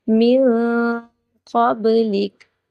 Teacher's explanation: من قبلک، نون ساکن ہے، یہاں پہ اخفا ہوگا اور با حروف قلقلہ میں سے ہے، آواز کو تھوڑی سی جنبش دیں گے